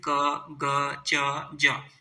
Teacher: क ग च ज ये बोलने में हमें कम सांस बाहर निकलती है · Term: अल्प प्राण